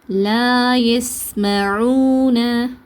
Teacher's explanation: சீனுக்கு அதிக நேரம் கொடுத்து உச்சரிங்க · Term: ரஹாவா